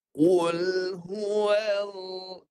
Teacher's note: Itu bunyi hidung. Jangan masuk ke hidung suara lam. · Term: lam tebal